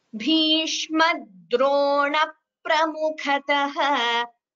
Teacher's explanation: There's a slight stress d before dro, and there is a slight Dvitva, that is the second p before pra also.